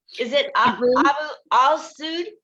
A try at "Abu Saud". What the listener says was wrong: No, the AL is silent. So Abu Saud.